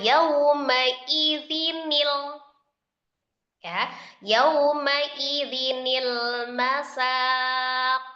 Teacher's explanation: Kata aslinya adalah yauma idzin, kasroh tanwin. Maka dibacanya adalah dengan menghilangkan kasroh tanwinnya menjadi kasroh biasa dan mengganti hamzah wasol menjadi nun kasroh. Maka bacanya yauma idzinil ya, yauma idzinil masaq. · dengan menghilangkan kasra tanwin, menggantinya dengan kasra biasa, dan mengganti hamza wasl dengan nun kasra